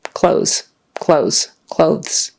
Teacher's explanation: to shorten it people tend to just say Z